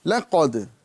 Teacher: لام یہ باریک حرف ہے، قاف پر حرف ہے اور دال باریک ہے